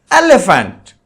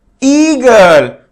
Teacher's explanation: In elephant, the sound of the E is very shorter, and in eagle, it is longer. So that is why elephant is called as short vowel and eagle is called as long vowel.